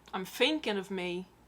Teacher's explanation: He uses the f sound on the th. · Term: th fronting